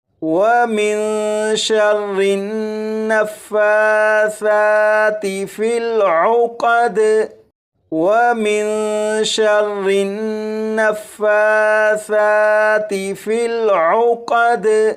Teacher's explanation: فا اور ثا کے اوپر کھڑا زبر ہے، ان دونوں حروف کو ایک ایک الف کے برابر کھینچ کر پڑھیں گے